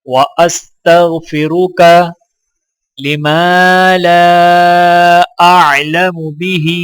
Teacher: اعلم بہ واستغفرک، واستغفرک لما لا اعلم بہ، میم کو الف کے ساتھ ملاتے ہوئے ایک الف کے برابر کھینچیں گے اور لام کو الف کے ساتھ ملاتے ہوئے الف پر چھوٹا مد ہے تو لہٰذا 3 سے 4 سیکنڈ کھینچ کر پڑھا جائے گا، اور یہاں پر ہا کے نیچے کھڑی زیر ہے تو لہٰذا ایک الف کے برابر کھینچ کر پڑھا جائے گا۔